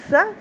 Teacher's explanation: سین کی سیٹی پرومیننٹ